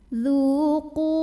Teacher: Karena ada waw sukun yang didahului baris dhammah. Maka cara bacanya dipanjangkan zalnya 2 harokat. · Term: mad tabi'i